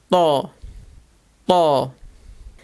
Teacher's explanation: This is a very emphatic T sound. Let's imagine you pronounce the word tall while insisting heavily on the T. But again, while doing so, you barely open your mouth.